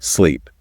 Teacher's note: In sleep that e sound is long, kind of stretched out.